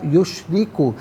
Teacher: یشرک میں را کے نیچے زیر ہے، را کو باریک کر کے پڑھا جائے گا۔